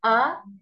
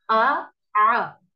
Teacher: जो हमजा है इसकी आवाज ऐसे तीखी निकलती है, जबकि आइन की आवाज में नरमी